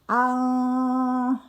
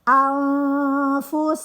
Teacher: nun mati bertemu fa itu hukumnya ikhfa atau samar